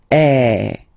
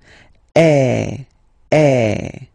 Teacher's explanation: the sound is really open, and normally your mouth should be opened a little bit more than with the accent aigu as well. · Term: accent grave